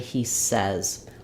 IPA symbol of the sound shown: ɛ